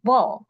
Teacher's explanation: Ball is, has a stress and it ends with a dark L. And dark L sounds like a back vowel, u or o in Japanese